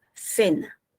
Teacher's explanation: Y a veces suena cena. Ahí tienes la fricativa interdental.